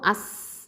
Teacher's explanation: Okay, இந்த சீனில் சுகூன் இருக்குது. இது வந்து ஹம்ச சிஃபத்தை கொடுக்கணும். இதை தரஃபுல் லிசான் எழுத்து. காற்று வெளியில் தள்ளணும். ரஹாவா டைமிங்கும் கொடுக்கணும்.